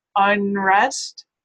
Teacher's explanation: your tongue is going to be slightly further back for that n because of the following R there than it would be in other places.